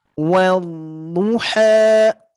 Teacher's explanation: di sini mad panjang 2 harkat ya. Jadi tidak dibaca terlalu kepanjangan.